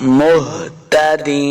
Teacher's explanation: ہا کو حلقے نچلے والے حصے سے ادا کرنا ہے